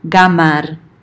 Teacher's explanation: the Old Arabic q is often pronounced as g